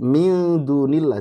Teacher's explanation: jangan min tapi mil, karena ikhfa itu artinya samar. Jadi jangan dibaca jelas ya.